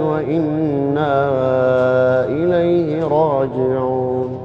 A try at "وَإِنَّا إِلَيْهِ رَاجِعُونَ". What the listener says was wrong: شوف لما تقول إن هذه النغمة بالذات يرجع الحرف على جهة اللسان، بدل ما هو من الجوف يخرج يرجع جهة اللسان، وهذا ما هو مخرج الألف الصحيح. لا تخليها ستريت، أو إنك ممكن تخليها يعني فيها تنغيم، مثلا أقدر أقول الذين إذا، لكن كلها ألف، الصوت ما انتقل ما جاء لللسان.